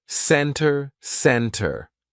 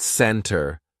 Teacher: So, let's look at the silent T. Usually, if the T comes after an N, we drop that T and we do not pronounce it.